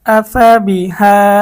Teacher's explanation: হামজা জবর আ, ফা জবর ফা, আফা বাজের বি, আফা বি, হা খারা জবর হা, আফা বি হা। হা এর মধ্যে আমরা এক আলিফ টানবো, বাকি আফা বি এখানে কোনো টান হবে না